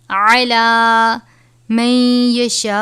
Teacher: غنہ کریں گے اور بڑی مد ہے، 5 الف کے برابر لمبا کر کے پڑھیں گے